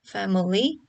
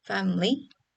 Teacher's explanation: tends to be reduced from three syllables family to two syllables family